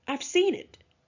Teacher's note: seen and it are stressed while I is a function word